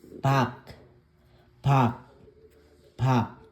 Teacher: si Sangkyok, kapag po nasa patsim, magiging normal K na lang yung basa sa kanya. Hindi madiin na tunog.